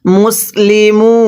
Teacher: আং, তা মিম পেশ তুম, আং তুম, মিম সিন পেশ মুস লাম জের লি মুসলি মিম ওয়াও পেশ মু নুন জবর না মুসলিমুনা ওয়াকফ করলে মুসলিমুন ওয়াকফের সময় 3 আলিফ টেনে পড়ব। মদের হরফ ওয়াওয়ের পরের হরফে ওয়াকফ হলে 3 আলিফ টানতে হয়।